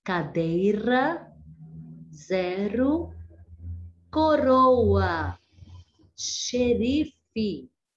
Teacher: Agora vamos falar sobre o R brando. Quando temos apenas um R no meio de uma palavra, ele apresenta um som mais fraco, que chamamos de R brando